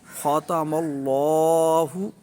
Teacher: اس میں اللہ کا لام پر بھی پڑھیں گے، موٹا بھی پڑھیں گے کیونکہ اس سے پہلے زبر ہے